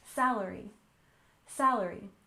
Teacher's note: next we have salary with stress on the first syllable